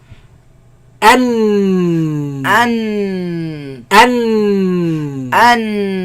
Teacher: the sides closed, the sound goes back and comes from the nose. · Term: Noon